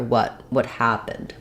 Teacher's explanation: In the phrase what happened, when we're saying it by itself, happened is the stressed word, and the stressed syllable of happened is the first syllable. So I've written that in capital letters here in uppercase so that you can see what happened, that the ha is going to be long, have the clear vowel, and the rest will be very reduced and have reduced vowels.